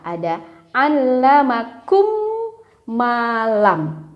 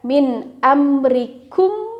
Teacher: Cara pengucapannya, mim yang pertama dimasukkan ke mim yang kedua sehingga menjadi satu, dan ingat pembacaannya disertai dengan gunnah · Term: idgham shaghir